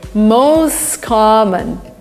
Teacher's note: T disappears, the words are linked together.